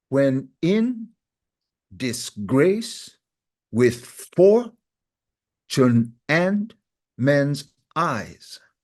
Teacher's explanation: Okay, so the stresses are on in, grace, for, and eyes. Those are the syllables or the actual word that falls on the stress.